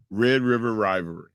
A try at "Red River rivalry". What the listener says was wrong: No, you changed your dialect multiple times.